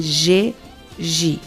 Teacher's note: Lábios em bico, língua recuada, som sonoro com vibração das pregas vocais.